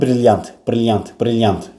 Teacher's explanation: Vurğu ilk hecadır, amma brilliant, brilliant, brilliant, yant hecasının üzərinə düşür